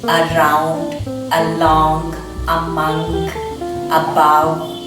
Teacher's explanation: When you pronounce this word a, you don't have any lip movement, your tongue is just sitting in the palate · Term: Schwa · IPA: /ə/